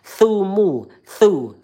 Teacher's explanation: Makhrajnya ujung lidah kita menempel dengan gigi seri yang atas keluar sedikit lidahnya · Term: huruf tsa